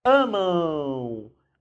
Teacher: quando termina em M, nós temos um ditongo nasal · Então, o som, embora termine com M, o som é de U.